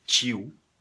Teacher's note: aqui a letra t a gente faz soar ch